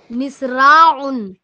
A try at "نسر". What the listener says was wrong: نسر، نسراع نہیں، نسر، نسر.